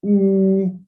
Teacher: Then the high back vowel, this one is a oo, because the tongue is in the higher position.